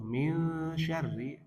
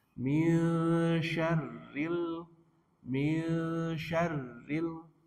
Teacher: Ingat untuk min syarri ini nunnya ketemu huruf shin, nun sukun ketemu huruf shin, hukumnya apa? Ikhfa hakiki, nunnya dibaca samar-samar.